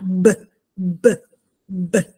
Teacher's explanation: ne accorgiamo mettendo le manine davanti al collo ok Per cui quando dico B di Bologna B B B dovrei sentire una vibrazione delle corde vocali